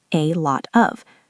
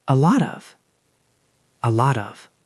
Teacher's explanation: There is a t at the end of lot and it is followed by the O in of. So it connects.